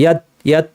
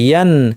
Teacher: নাক থেকে আওয়াজ, নাক খুলেই পড়তে হবে। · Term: স্বাভাবিক গুন্না